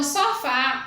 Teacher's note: mais forte na palavra sofá é o fá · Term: sílaba mais forte